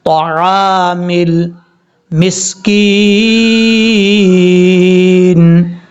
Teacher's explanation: طا حروف مصالحہ میں سے ہے، پر پڑھا جائے گا